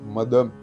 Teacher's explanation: മദം ആ ദ തൊണ്ട ചേർക്കാതെ ഉച്ചരിക്കേണ്ട ദയാണ്